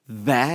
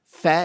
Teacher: Va is voiced. Fa is voiceless.